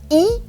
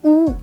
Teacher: So you have e which is closest to the front, u which is closest to the back